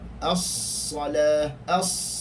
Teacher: Bermaksud sad itu adalah huruf yang tebal, berdesir dan berangin. Maka desiran sad adalah yang paling kuat.